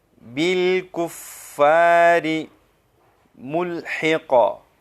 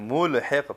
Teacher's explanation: تو اس لام میں قلقلہ نہیں ہے، لام کو بغیر جنبش کے بغیر قلقلہ کے ہم ادا کریں گے